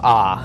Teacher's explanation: The short A is more of an AH, not an A like cat. Right, it is ah, as in wall.